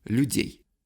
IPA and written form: lʲʉ̞ˈdʲej (людей)